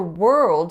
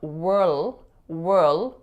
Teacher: from that Earth sound we're going right into a dark L so that's an L again in which the back of your tongue is raising not the front of your tongue raising to your alveolar Ridge